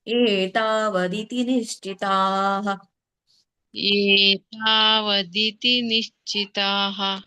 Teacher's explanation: ಏತಾ ಎರಡೆಷ್ಟು ಎಳಿಬೇಕು, 2 ಗಳಿಗೆ ಬರುದು ಏ ಮತ್ತೆ ತಾ, ಉಳಿದಿದ್ದೆಲ್ಲ 1 ಗಳಿಗೆ